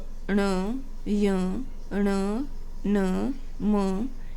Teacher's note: यह बिना नाक की सहायता के नहीं बोले जाते हैं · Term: अनुनासिक वर्ण